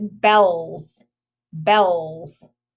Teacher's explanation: bells sounds like a z at the end